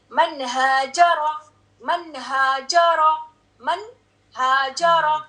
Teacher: یہ نون کے یعنی آرٹیکولیشن پوائنٹ پہ جا کے یہ آپ کی tip of the tongue touch کرے گی